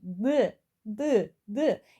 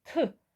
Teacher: mən D-nı tələffüz eləyəndə nisbətən nəfəsim əlimə zəif dəydi. T-nı tələffüz eləyəndə daha güclü dəyir.